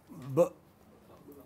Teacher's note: Therefore, it is plosive. So, we have voiced bilabial plosive, as in bin.